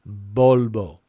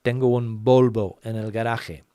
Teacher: there's virtually no difference between the way the V sound is pronounced in Spanish and the B sound